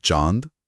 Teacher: चंद्रबिंदु कोमल ध्वनि है जैसे चांद जहां हवा नाक और मुंह दोनों से निकलती है